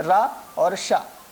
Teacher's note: रा और शा, ये मूर्धन्य कहे जाते हैं, अर्थात इनका उच्चारण मूर्धा के द्वारा होने से यह मूर्धन्य वर्ण कहे जाते हैं।